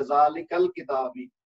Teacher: جیسے ہم نے کہا تھا نا ذالک الکتابی, اب الکتابو کا الف جو ہے پہلے یعنی حمزہ جو ہے وہ نہیں پڑھا گیا, ذالک الکتابی, کاف کو الکتابی کے لام سے ملا دیا تو وہ حمزۃ الوصل ہے, اس لیے پڑھا نہیں گیا